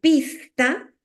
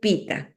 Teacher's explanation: Está omitiendo la S en posición de coda. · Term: omisión de coda silábica